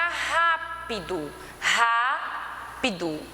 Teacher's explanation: O Rá, ele é a antepenúltima, tá? Tônica, então é proparoxítona